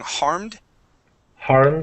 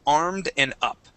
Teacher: start off with the vowel sound instead of trying to use a h sound to get into it